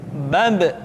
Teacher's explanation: Ketika mati, maka terdengar suara pantulan.